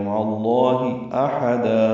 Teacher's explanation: مع اللہ میں لفظ اللہ کا ہا اور احدا کا حمزہ اقصی حلق سے ادا کریں گے بالجہر